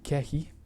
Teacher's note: describes it as a k sound but deeper in the throat